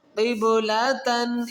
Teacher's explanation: یہاں تن پر جو غنہ ہے یہ اخفا غنہ ہے، کیونکہ دو زبر کی تنوین کے آگے حروف اخفا میں تا ہے تو یہاں اخفا غنہ کیا جائے گا.